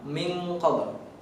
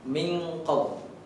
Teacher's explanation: Ada eng-nya di sana di tengah-tengahnya. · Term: ikhfa